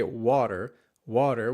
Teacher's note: the first syllable is pretty noticeably emphasized and the second one is pretty noticeably reduced